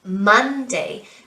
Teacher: So if we want to look at the syllable stress, okay, so if we look at this word, Monday, Monday, so we put the stress on the first syllable, Monday. The same for Tuesday, Tuesday.